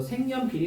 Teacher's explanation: 근데 색은 왜 색으로 바뀌어 있어요? 니은 첨가 다음에 교체 비음화까지 나타난 거야